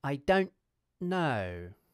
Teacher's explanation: I'm not making a /t/ sound. Instead I clip the end of the /n/ consonant with a glottal stop.